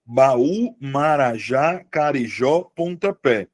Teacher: tem a sílaba tônica no final